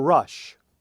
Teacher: containing sh, the fricative, the unvoiced fricative.